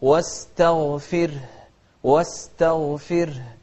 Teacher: الراء لأنها ساكنة وقبلها كسر نرققها